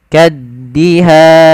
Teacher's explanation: lafal kaddihan tekan di huruf da-nya, kaddihan. Kemudian pada lafal han, di sini ada namanya hukum tajwid berupa mad arid disukun, yaitu mad yang terjadi disebabkan karena sukun arid ketika kita waqaf di akhir bacaan.